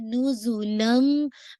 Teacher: अब आप ला नहीं पढ़ रहे, क्यों? क्योंकि तनवीन की आवाज़ मीम के अंदर मर्ज हो रही है।